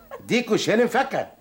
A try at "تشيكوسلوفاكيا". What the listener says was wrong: فاكيا مش فكا؟ فاكيا. تشيكو. سلو. فاكيا. قولها على بعضها تشيكوسلوفاكيا.